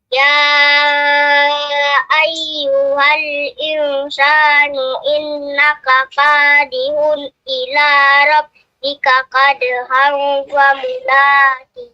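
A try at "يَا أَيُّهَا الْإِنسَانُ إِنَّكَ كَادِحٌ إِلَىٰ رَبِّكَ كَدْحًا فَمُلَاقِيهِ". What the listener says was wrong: Sebenarnya untuk ikhfa'nya kurang panjang sedikit ya.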